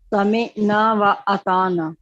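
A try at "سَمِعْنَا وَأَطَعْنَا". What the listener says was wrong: اچھا پہلے صرف سمعنا بولیں لیکن سمعنا نہیں کہنا، سمعنا نہیں، اس سے پتہ کیا ہوگا، لگے گا جیسے حمزہ ہے میم کے بعد، ٹھیک ہے.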